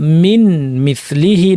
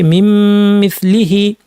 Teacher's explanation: নুনকে মিম বানিয়ে দুইটা মিমকে যুক্ত করে গুন্না লম্বা করে গুন্না সহ ইদগাম করেছি, মিম মিসলিহি।